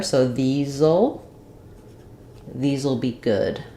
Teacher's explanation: this letter S is a Z sound, and then I'm going to contract will, just use the L sound of it, and it'll have a little schwa there.